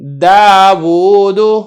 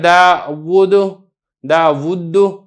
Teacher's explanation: اسی طریقے سے یہاں پہ دیکھیں داود، اب یہ جو واو ہے ایک پہ الٹا پیش ہے، اور جو الٹا پیش ہوتی ہے اصل میں وہ واو ساکن ہی ہوتی ہے، تو گویا کہ ایک واو متحرک ہے، دوسری واو ساکن ہے، تو آپ نے خوب ظاہر کر کے پڑھنا ہے